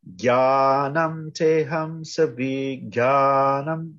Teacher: those long syllables also help to set kind of the rhythm and meter of it